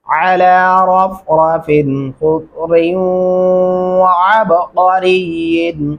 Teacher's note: خضر خا کو موٹا، ضاد کو موٹا پڑھا جائے گا